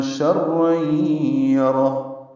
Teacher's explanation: ادغام ناقص، یہ آواز ناک میں جائے گی، غنہ ہوگا. شرین یرہ، را پر پڑھیں گے اور ہاں ساکن کر دیں گے، وقفاً اس پہ ہمس ہوگا.